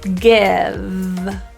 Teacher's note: the V is typically devoiced by accident so it might sound like GIF or geef so we'll pull